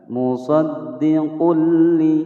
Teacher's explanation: Idgham bila gunnah cara membacanya adalah dimasukkan ya dari huruf qaf yang berharokat dhammatain ini masuk langsung ke huruf lam tanpa didengungkan